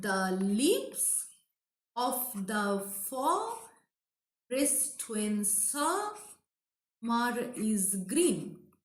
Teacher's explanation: This is a trisyllabic foot. two unstressed syllable is followed by one stressed syllable. Okay, so that is Anapest.